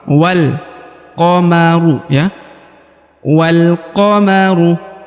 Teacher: Maka huruf waw langsung masuk ke huruf lam.